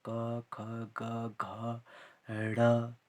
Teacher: उच्चारण जब हम करते हैं कंठ से ही निकलते हैं ये शब्द